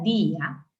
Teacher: el acento no está en la A, el acento está en la I, en la vocal débil. Eso se llama hiato acentual.